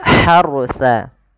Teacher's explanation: Huruf ha yang kecil itu dikeluarkan dari tenggorokan tengah. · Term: ha kecil